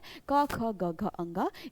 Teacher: इन सभी व्यंजनों का उच्चारण स्थान या इनकी ध्वनियां कंठ होती हैं।